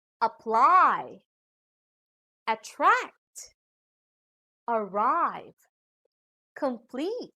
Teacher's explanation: these are two syllable verbs with long vowels and diphthongs so we put the stress on the second syllable